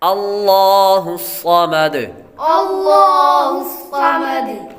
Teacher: یہاں پر بھی لفظ اللہ کے لام کو پر پڑھیں گے۔ آگے الصمد، صاد حروف مستعلیہ میں سے ہے اس لیے اس کو پر پڑھیں گے، آخر میں دال حروف قلقلہ میں سے۔